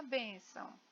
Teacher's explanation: bem é a sílaba mais forte, muito embora as duas sejam acentuadas